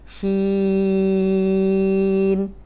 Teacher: یہ بھی انگلش میں جب ہم شی بولتے ہیں تو ہم ناک میں آواز نہیں لے کے جا رہے ہوتے، اسی شی کو ہم لمبا کریں گے، شین۔ اینڈ میں چھوٹی سی نون کی آواز آئے گی